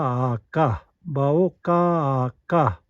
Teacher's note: When we say ka, ha sound is already there. So additional ha will make no difference in the pronunciation.